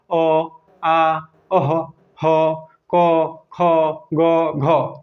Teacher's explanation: तो अब कंठ से कौन कौन उच्चारित होंगे? अ, आ, अह, ह, क, ख, ग, घ, ये सब कंठ से।